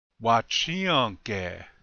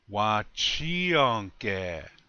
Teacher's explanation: The accent again is on the second syllable, on the chi.